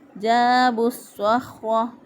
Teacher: با کو صاد کے ساتھ ملا دیا، اور یہاں پر الف لام کا ادغام ہوا ہے